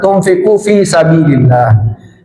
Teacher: nun sukun bertemu fa, ikhfa ya, disamarkan lalu didengungkan